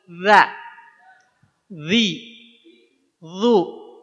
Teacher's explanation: Itu kalau dha. Kalau dha dia harus naik si pangkal lidahnya. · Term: huruf dha